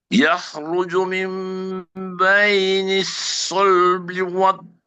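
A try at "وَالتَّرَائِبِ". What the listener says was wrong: Taknya jangan Buya tebal. Toro. Oke, wattaro.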